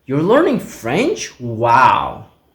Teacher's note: Rising intonation on wow.